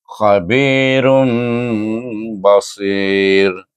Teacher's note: iqlab dibaca dengan dengung dua harakat juga · terus nun ditukar mim pada huruf ba. Diefakkan huruf mim tu kepada huruf ba.